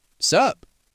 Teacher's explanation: You just drop the what's.